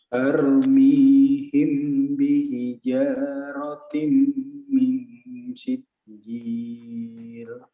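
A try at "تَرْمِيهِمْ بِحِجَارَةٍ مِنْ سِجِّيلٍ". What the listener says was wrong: Ahsan, barakallahu fiik.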